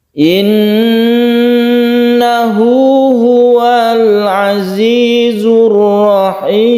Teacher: Tasydid nun disebut gunnah musyaddadah, kita dengungkan di sini